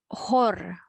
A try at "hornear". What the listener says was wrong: Please, R. You have to pronounce R.